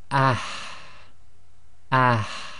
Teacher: Now the next one doesn't really have an equivalent in the English. It's the ha, which comes from the middle of the throat and requires you to forcefully push air to the front and out of the front of the mouth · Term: the forceful ha